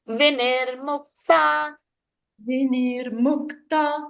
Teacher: finish it Vinirmukta like very easily and light on the tongue so that it doesn't go to Dirgha sound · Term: short sounds